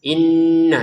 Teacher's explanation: Inna kita dengungin dua harakat ya. · Inna kita dengungin 2 harokat ya. Inna, jadi jangan sekedar inna gitu ya.